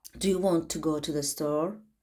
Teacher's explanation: Store sözündə artıq intonasiya yuxarı qalxır. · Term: rising intonation